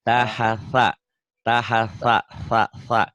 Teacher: Ujung lidah ke ujung gigi kayak digigit.